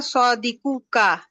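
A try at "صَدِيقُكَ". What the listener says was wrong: সতে টান নাই আপু সতে টান নাই সদিতে টান আছে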